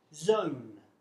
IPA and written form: zəʊn (zone)